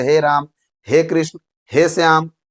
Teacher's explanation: प्लुत स्वर इसके उच्चारण में दीर्घ स्वर से भी अधिक समय लगता है